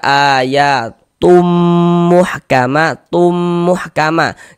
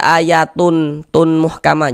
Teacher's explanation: Kemudian dighunahkan. Jadi bagian tumnya itu suaranya itu kita tahan, kita panjangkan sejenak sepanjang dua harakat. Ayatum muhkama ma dibaca panjang. · Yang dimasukkan itu apanya begitu kan? Bunyi tanwinnya ini dimasukkan ke huruf mim. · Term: idgham bih, idgham bi gunnah